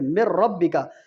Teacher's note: اور 2 حروف میں غنہ نہیں ہوتا، لام اور را میں اس کو ادغام بلا غنہ کہتے ہیں۔ جیسے مر ربک، نون ساکن کے بعد دیکھیں را، یہ یرملون کے حروف میں سے لام میں اور را میں غنہ نہیں ہوتا۔